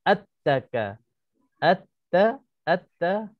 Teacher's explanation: hilang terus lam. Lam tak ada, tak wujud. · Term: idgham syamsi